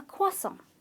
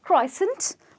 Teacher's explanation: the R is silent there is an invisible W that appears in the pronunciation